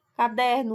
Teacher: Caderno, o der é a sílaba tônica.